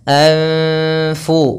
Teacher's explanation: suara nunnya samarkan kepada huruf Fa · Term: Ikhfa